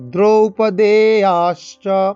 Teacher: দ্রুপদো ওকার, দ্রুপদোতে টান দেবো, দ্রৌপদেয়াশ্চ এই দ্রৌ ওকারে টান দেবো, দ্রৌপদেয়াশ্চ আ দেতে টান, আতে টান হবে, শ্চ তালিব্য যায় তালিব্য বর্ণ।